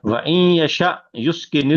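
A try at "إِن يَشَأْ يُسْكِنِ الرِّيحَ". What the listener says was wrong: ये वाव नहीं है।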